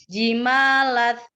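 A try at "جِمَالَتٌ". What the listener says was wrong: Tambah taknya dikasih sifat hams sedikit, coba.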